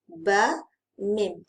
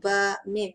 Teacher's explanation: Pertemuan dua bibir untuk huruf ba dan mim, tempat keluar huruf dia sama